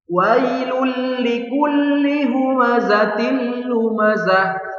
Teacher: Yang namanya melebur wailul li. Jadi bunyi tanwinnya sudah dileburkan ke lam. Jadi tidak terdengar lagi bunyi tanwin.